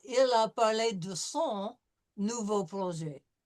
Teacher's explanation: We're going to have a vowel that's going to be in front of an N, so it's going to be a nasal sound.